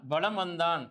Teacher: ஆனால் வலம் வந்தான் என்பதில் மகர மெய்யெழுத்தை அடுத்து வகர எழுத்து வருவதனால் மகர மெய்யானது தனக்குரிய அரை மாத்திரை அளவிலிருந்து குறைந்து 1/4 மாத்திரை அளவில் ஒலிக்கிறது. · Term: மகர குறுக்கம்